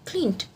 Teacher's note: Notice that the final consonant before ed is voiced, so the suffix also takes the voiced form.